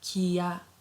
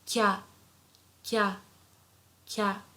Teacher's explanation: Together, if we put them, it becomes kya, kya. So ki plus ya is not kia, it's kya, kya, kya. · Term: contracted sounds